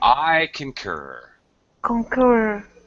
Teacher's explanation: the key here anna is the second syllable stretch